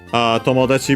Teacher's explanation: Tomodachi, by the way, becomes unaccented